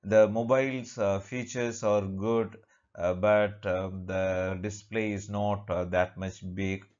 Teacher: the first part will take the rising intonation and the last part will take the falling intonation.